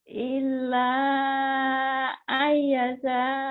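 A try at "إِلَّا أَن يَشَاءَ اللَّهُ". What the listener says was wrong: Ai-nya ditahan. Kan idgham biguna. Nyamber, double, ditahan, dengung. Ayyasha. Kurang tahan ya, tahan. Shin-nya mana? Ayyasha. Shin-nya tuh, hutang Shin ya.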